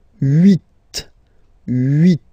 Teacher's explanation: final T is pronounced